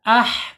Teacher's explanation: Makhraj ha adanya di tengah tenggorokan ya, tengah-tengah tenggorokan. Kemudian secara ee sifat ada di alhams, mengalirnya napas atau udara.